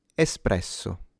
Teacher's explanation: The R is slightly trilled, but you don't have to exaggerate it